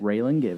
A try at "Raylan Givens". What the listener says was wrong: Just Raylan, no S.